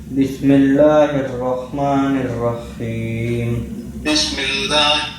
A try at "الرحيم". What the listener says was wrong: رحیم. نہیں حلق سے. رحمان میں جیسے آپ صحیح پڑھتے ہیں نا. اور آپ کا جو ہے نا وہ رحیم میں ہا پہ رکنا نہیں. رحیم نہیں رحیم.